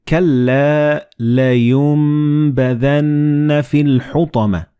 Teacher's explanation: So the noon and ba, when they follow one another in the same word, you don't pronounce noon, but you pronounce meme.